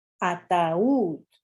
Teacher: The U, the weak vowel, separates from the strong vowel A, because that's how this word is usually pronounced.